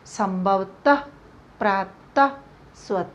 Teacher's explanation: विसर्ग इसका उच्चारण ह कि तरह होता है